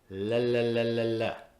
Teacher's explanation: All the air goes around the sides of the tongue. The tip of my tongue touches the alveolar ridge. · All the air comes out of my mouth. No air comes out of my nose. · when I pronounce the letter L in any word at any time, it is a dark L. All the air comes out of my mouth.